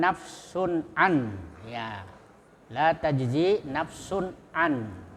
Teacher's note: Ain itu huruf halqi yang ada di kerongkongan. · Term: izhar halqi